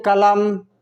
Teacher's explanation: क का पूरा उच्चारण, ल का पूरा उच्चारण, लेकिन म का पूरा उच्चारण नहीं होता है, आधा होता है। भले ही हिंदी में इसको आधा उच्चारण है बोलने में, लेकिन लिखने में कंप्लीट लिखा जाता है।